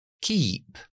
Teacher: la k siempre es una K es totalmente sorda pero es oclusiva hay una explosión y lo articulamos en la zona velar atrás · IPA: /ki:p/